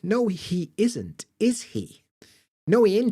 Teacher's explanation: you'll find that the H disappears